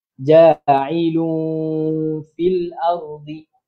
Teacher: kita perlu dengung dua harakat